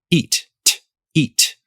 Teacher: So let's talk about the English word eat. At the end of that word, much of the time you're going to put a fully aspirated T sound after it.